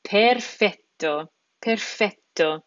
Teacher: that Double T combination we need to make sure that that we're pronouncing that t letter twice it's not perfetto it's perfet perfeto we're hitting that t twice